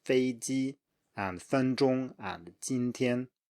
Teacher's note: make sure you keep 2 high flat tones